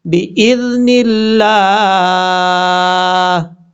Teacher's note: اب با کے بعد جو حمزہ ہے، حمزہ کے بعد ذال ہے، ذال کو نارمل طریقے سے پڑھا جائے گا بِإِذْنِ اللہ، اس طریقے سے. لفظ اللہ سے پہلے نون کے نیچے زیر ہے، اس لیے لفظ اللہ کو باریک پڑھیں گے، فل موت نہیں پڑھیں گے، یہ یاد رکھیے گا.